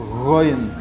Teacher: hampir seperti buang reak yang ringan digabung dengan suara dari dalam dada